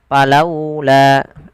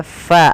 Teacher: Fa ketika melafalkan huruf fa harus dialirkan nafasnya ya teman-teman. Jangan sampai kita membaca huruf fa ini dia menjadi huruf pa.